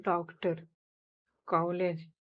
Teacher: इसका उच्चारण ओ और आ के बीच का होता है।